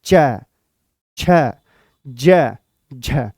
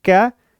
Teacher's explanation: स्पर्श तो करेगी जीभ परंतु इनको बोलते समय हमें संघर्ष भी करना होगा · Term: स्पर्श संघर्षी व्यंजन